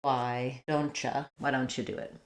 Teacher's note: Because that's very similar to ch, the ch sound, we morph from tia, why don't ya, to don't cha. We just assimilate those two sounds and it becomes more of a cha. So that's where you get, why don't you?